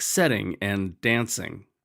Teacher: Those words don't rhyme because the last accented syllable is set, not ing.